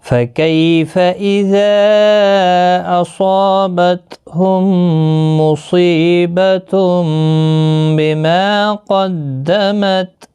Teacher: یالین ہے، تھوڑا نرمی کے ساتھ آدھے الف کی مقدار کے برابر کھینچ کر پڑھیں گے، فا کو کھینچنا نہیں، اذا یہاں پر مد منفصل ہے، 3 الف کی مقدار کے برابر کھینچ کر پڑھیں گے۔